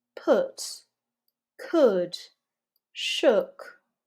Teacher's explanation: when you see an o o or an o u and sometimes we pronounce this with a lazy sound so not ooh like in you almost like that neutral schwa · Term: lax vowels